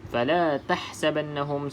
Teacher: tahsaban yang pertama ni di sini pun sama ha kena pedaskan Nun ada tanda sabdu Oke kita dengungkan dua harakat